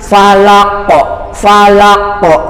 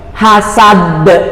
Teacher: maka itu namanya qalqalah kubro, qalqalahnya total. Jadi keluar mantul beneran.